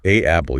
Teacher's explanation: Linguist call that a glottle stop. When you put two vowel sounds back to back, your vocal cords have to abruptly stop and restart. Adding that N sound acts as a physical bridge, an apple. · There's a weird stop in the middle there, like a little hiccup in my throat.